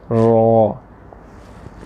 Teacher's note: रॉ में हमने क्या किया कि ज़ुबान की जड़ को उठाया और ज़ुबान की नोक जो है वो तालू का जो पहला हिस्सा है दांतों की तरफ मसूड़ों वाला, उसकी तरफ थोड़ी सी उठेगी, साथ ही नीचे आ जाएगी।